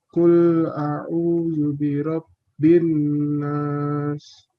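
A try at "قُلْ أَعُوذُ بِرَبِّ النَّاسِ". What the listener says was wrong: Tayyib ya. Sudah betul ya tadi qulnya juga ya.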